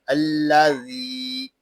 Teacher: ذال کو ہم ایک الف تک کھینچ کر پڑھیں گے کیونکہ یہاں یا مدہ ہو رہا ہے. یا مدہ اس لیے ہو رہا ہے کہ یا ساکن سے پہلے زیر آ گیا ہے.